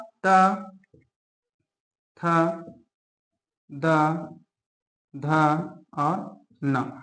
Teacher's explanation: त वर्ग। इसमें आपका त वर्ग में इसका उच्चारण स्थान है आपका दंतव्य। क्या? दंतव्य व्यंजन। · जो हमारा जीभ है वह क्या करता है? दांतों को टच करता है।